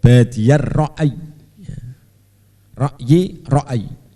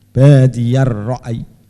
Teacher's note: Ya-nya jangan jangan ditasdid. Jadi pokoknya tidak kencang.